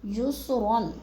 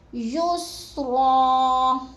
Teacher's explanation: 2 زبر تنوین کو وقف کی صورت میں ایک زبر میں بدل کر پڑھیں گے